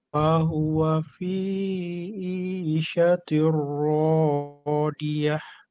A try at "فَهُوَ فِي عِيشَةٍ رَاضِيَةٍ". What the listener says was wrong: Coba ainnya. Fahuwa fi'i.